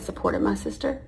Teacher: And that rising intonation at the end of the sentence, when she says, supported my sister, is like a question.